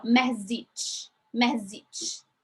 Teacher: So you have the, it's just for us, it's just like sh. So this t with sh, you have to pronounce both of them. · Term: ch sound